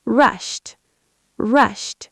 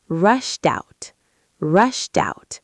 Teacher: Notice how the t blends into out.